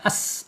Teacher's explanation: sofir itu ada suara desisan seperti angsa